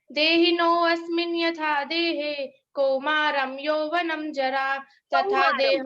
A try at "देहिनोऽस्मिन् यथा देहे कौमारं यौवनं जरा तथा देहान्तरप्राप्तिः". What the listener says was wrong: थोड़ा धीरे गा सकते हैं, उच्चारण ठीक करेंगे पर थोड़ा धीरे गति स्पीड।